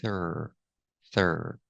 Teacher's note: Pronunciation for throat, use the TH with no voice plus the R sound